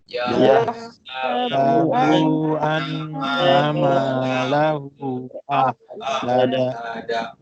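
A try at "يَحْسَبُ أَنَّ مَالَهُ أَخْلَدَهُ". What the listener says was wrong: Bu tak panjang. Yahsabu an terus. Yahsabu an terus. Bu tak ada panjang. Yahsabu an tak. Bu pendek je.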